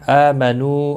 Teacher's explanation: نو واو مدہ ہے، ایک ایک الف کے برابر کھینچ کر پڑھیں گے